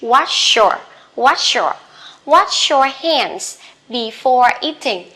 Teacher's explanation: Wash your SH and after that is Y, you can link them together.